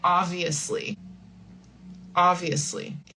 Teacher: we don't say obviously. We really don't pronounce the B. We say obviously.